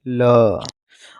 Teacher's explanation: श्वास वायु बगल से प्रवाह से जाती है उसे पार्श्विक व्यंजन कहते हैं